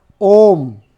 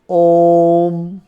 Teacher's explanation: ओम में आपकी आवाज ज्यादा निकलती है और देर तक निकलती है ना। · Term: प्लुत स्वर